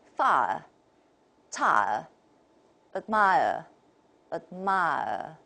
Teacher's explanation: 这是三元音，但是英语的这种三元音呢，它中间的这一个音都会被调掉，可以调掉。